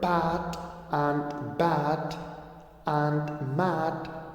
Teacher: So the initial sounds in the word pat and bat and mat are all bilabials. They are represented by the symbol p, which is voiceless, and b and m, which are voiced.